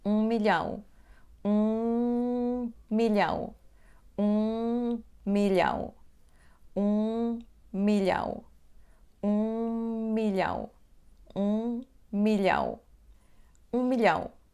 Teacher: A palavra seguinte começa com o som bilabial M, então pronunciamos a letra M bilabial só uma vez e juntamos palavras 1 milhão, 1 milhão, 1 milhão, 1 milhão, 1 milhão, 1 milhão, 1 milhão.